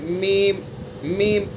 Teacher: دونوں ہونٹوں کی خشکی کا حصہ، جو باہر والا حصہ ہے، خشکی والا حصہ سے میم کو ادا کریں گے، میم میم، اندر تر والے حصے سے کس کو ادا کریں گے، با کو، با ما با۔